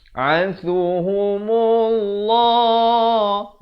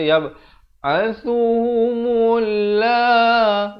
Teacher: Di sini lafz jalalah dibaca tebal.